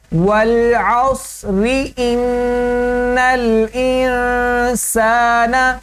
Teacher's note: جب ہم اس کے رواں پڑھیں گے والعصر، را کو باریک ادا کریں گے، کیونکہ یہ زیر ہے اس کے نیچے، اور زیر والی را جو ہوتی ہے وہ باریک پڑی جاتی ہے۔